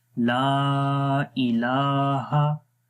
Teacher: लाम को लंबा करेंगे अलिफ की वजह से और मद की वजह से। अलिफ से पहले जब ज़बर आए तो लंबा करते हैं 1 सेकंड, और यहाँ पर यहाँ पर अलिफ मद्दा है और अलिफ मद्दा के ऊपर ही मद आ रही है, उसको जो है वो 2 से 3 सेकंड लंबा करते हैं।